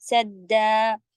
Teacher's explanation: سدا پہ آپ نے دیکھا کہ الف بس ایک الف کے برابر رکیں گے